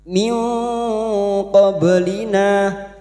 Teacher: Kita samarkan bunyi nun sukun dan mendengung selama tiga harakat. · ba sukun yang mati asli di tengah kalimat qalqalah sugroh. Jangan lupa dipantulkan. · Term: ikfa hakiki